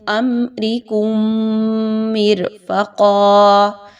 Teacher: میم مشدد کے غنّے اچھے سے ادا کیجئے